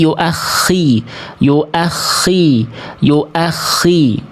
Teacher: Ya, karena ingat kho ini tafkhim nisbi. Kho ini walaupun bertasydid tapi kalau dapatnya harokatnya kasroh maka tetap harus dibaca ketebalannya nisbi, berkurang, melemah. Ketebalannya melemah, berkurang.